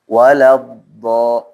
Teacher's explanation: Dotnya lebih tebal ya, tafkhim. Waladdo, makanya dia istitalah, memanjangnya suara dot itu. Dari ini nih, dari lidah nih sini, nah sampai ujung deh teman-teman.